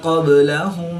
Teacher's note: قاف حروف مستعلیہ میں سے ہے تو اس کو پوری یعنی موٹا پڑھیں گے. با حروف قلقلہ میں سے ہے اور جب حروف قلقلہ ساکن ہوں تو ان میں قلقلہ خوب ظاہر ہوگا. یہاں پر ہم قلقلہ صغریٰ کر کے پڑھیں گے.